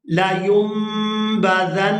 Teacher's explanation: نون ساکن کے فوراً بعد جب با آ جائے تو وہاں نون جو ہے وہ میم کے اندر کنورٹ ہو جاتا ہے ، تو یہاں میم میم زبر مم اس طرح سے پڑھیں